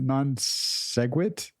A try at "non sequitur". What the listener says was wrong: There's no G in sequitur, dude. You said, No, there's no G. You said non-seg.